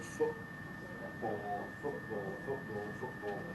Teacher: very widespread now to pronounce it with a glottal stop at the end of the first syllable